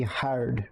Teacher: put an emphasis on the R. It's almost guttural in the sound.